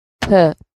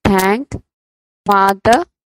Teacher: The blade of the tongue makes a light contact with the upper row of the teeth during the articulation of the sound th, as in thank, father. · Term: dentals